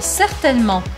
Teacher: Percebam que o N aqui no meio, ele praticamente desaparece. Eu não falo certainement, mas eu falo certainement.